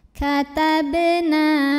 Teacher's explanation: Berikutnya ada hukum qalqalah sughra karena ada huruf qalqalah yaitu ba yang sukunnya asli dan bawaan dari bacaannya ada di tengah bacaan. Dibaca dipantulkan dengan pantulan yang kecil